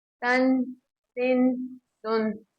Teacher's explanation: आप जब उसके उर्फ पढ़ेंगे तो आपको आवाज महसूस होगी कि तनवीन की और नून साकिन की आवाज एक जैसी निकल रही है